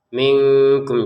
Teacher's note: ini nun sukun bertemu kaf baru kita membacanya samar